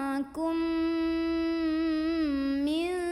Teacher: Maka cara membunyikannya, mim yang sukun ini dileburkan dengan mim kedua sambil ada dengungannya juga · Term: idgham mimi